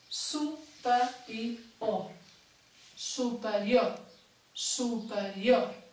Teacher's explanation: La síl·laba tònica és l'última, les altres tres són àtones.